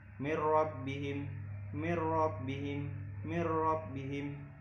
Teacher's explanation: Jadi ada nun sukun bertemu dengan ro, maka bacanya tidak didengungkan.